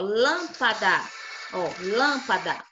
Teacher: o lan é a antepenúltima como ela tá acentuada então ela essa sílaba é a mais forte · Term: proparoxítona